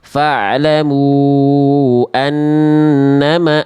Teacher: an tuh ditahan dulu baru anna baru masuk ke vokal a-nya ya. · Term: nun tasdid